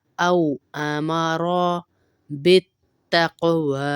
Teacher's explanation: औ पे आपके होंठ बंद हो जाए गोल हो जाएंगे